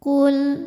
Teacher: Lam sukun disebut dengan lam mutlak. Kita bunyikan dengan idhar atau jelas. Dengan syarat di hadapan lam sukunnya ini bukan huruf lam lagi, juga bukan huruf ra.